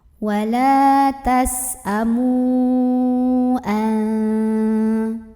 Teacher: mim yang berbaris dhammah boleh kita panjangkan 4 atau 5 harokat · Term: mad jaiz munfasil